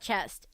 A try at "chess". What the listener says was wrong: Chess. No T.